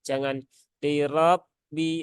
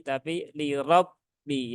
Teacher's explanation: huruf ba itu jangan sampai dia terayun saat ee tasdid